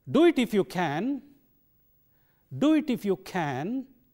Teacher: can coming at the end so it takes a strong form